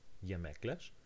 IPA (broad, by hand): jemekler